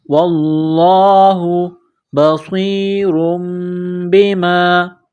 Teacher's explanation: لفظ اللہ کے نام سے پہلے زبر ہے، لفظ اللہ کے نام کو موٹا کرنا ہے